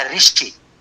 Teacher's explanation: वो री नहीं बोलते। उत्तर भारत में हम लोग री बोलते हैं